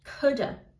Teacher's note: então com esse sonzinho aí ou de D bem levinho ou com o Flap D que ficaria com esse sonzinho de R